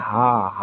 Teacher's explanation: तो इसमें कंठ से आवाज़ आएगी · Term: काकल्य व्यंजन